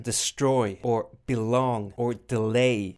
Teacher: there's an unstressed syllable followed by a stress syllable